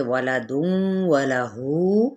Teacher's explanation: اب یہاں تنوین پیش کے بعد واو متحرک ہے، ادغام مع الغنہ کا قاعدہ، ہو کو ہم 4 حرکت کھینچیں گے اوپر مد کی وجہ سے۔